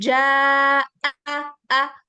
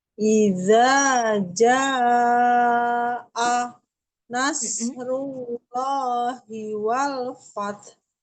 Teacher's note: Ja'a, tadinya ja 2 harokat aja, tapi ada hamzah nih. Jadi 4 harokat atau 5. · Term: mad wajib muttasil